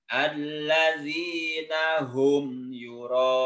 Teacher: 6 harkat karena termasuk mad wajib muttasil. Jadi panjangnya 6 harkat.